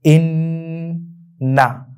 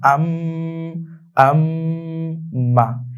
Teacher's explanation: এবং গুন্নাহ আমরা কিভাবে করব? অর্থাৎ নুনের উপর এবং মিমের উপর যখন তাসদিদটা থাকবে তখন আমরা কিছু সময় নিব, অর্থাৎ একটু দেরি করব।